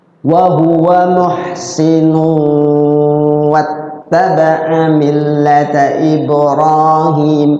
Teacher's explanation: Wa huwa muhsinu, di situ tanwin atau domatain ketemu waw, idgham bigun. Jadi tanwinnya domatain dimasukkan ke waw, diidghamkan